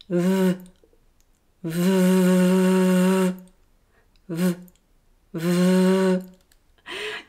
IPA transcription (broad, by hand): v